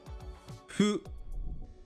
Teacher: the Japanese 'fu' is not quite an English 'h' or 'f' like 'hoo' or 'foo', but somewhere in between